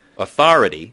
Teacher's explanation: Whereas North Americans put a de-stressed sound, authority. And sometimes in the second syllable, you'll hear North Americans say ah instead of aw. Authority as opposed to authority.